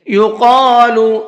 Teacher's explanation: قاف کو پر کر کے پڑھنا ہے اور ساتھ ساتھ کھینچ کر کے بھی پڑھنا ہے۔